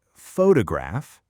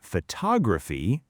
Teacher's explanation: photograph, stress on the first part, but photography, the stress shifts to the second